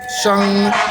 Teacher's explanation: The word for today is sheng in the second tone. Sheng, rising tone, second tone